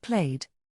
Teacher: the ed is pronounced like a d, without creating another syllable. Played sounds like played. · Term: The d sound